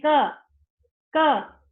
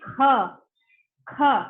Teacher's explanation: When you are speaking kha, the air is blowing, you are blowing out the air, yes? So this is mahapran.